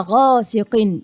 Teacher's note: الغين حرف مفخم مفتوح، هنا درجة أولى لأنه مفتوح وبعده حرف مد، فده درجة أولى.